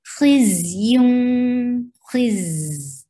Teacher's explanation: there is safir on za and there is rakhawa. The sound should flow.